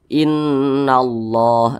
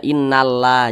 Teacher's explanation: berjumpa dengan tanda baca fathah atau tanda baca dah seperti ini maka kalimat Allah itu dibaca tebal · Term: dibaca tafkhim